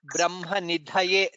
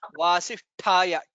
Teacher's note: Brahma Nidhaye, Dha is a Mahaprana. Vasisthaya, Tha is a Mahaprana there.